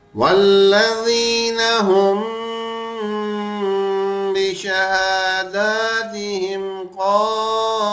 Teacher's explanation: اس میں آیا ہم، یہاں میم ساکن ہے، اس کے بعد حرف با. تو میں نے یہاں پھر غنہ کیا اور اچھا بھرپور غنہ کیا